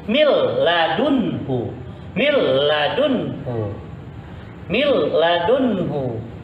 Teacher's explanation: Nun mati langsung masukin, leburin ke dalam huruf lam. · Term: bilagun